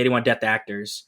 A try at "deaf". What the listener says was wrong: Deaf. It's an F. You were saying death. I saw your tongue go under your teeth, and I was like, "You